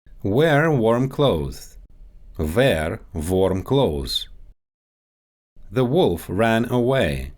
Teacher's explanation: Russian speakers often push the W sound toward a V